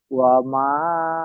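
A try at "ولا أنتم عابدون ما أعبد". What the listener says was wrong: ওয়ালা, মা নেই, ওয়ালা আছে। ওয়া- ওয়ালা আনতুম।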